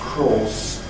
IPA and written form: krɔːs (cross)